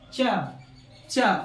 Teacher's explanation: तालु का यूज करना पड़ रहा है हमको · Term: तालव्य